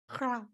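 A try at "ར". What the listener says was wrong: almost ra. Not the back of your throat, but your tongue. Ra, ra, ra. Put your tongue on the roof of your mouth. Okay, just place it there, right?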